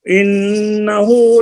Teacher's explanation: ان میں نون مشدد کا غنہ ہے